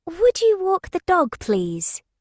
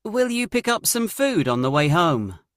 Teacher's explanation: The speaker starts with a high pitch to sound polite. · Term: polite intonation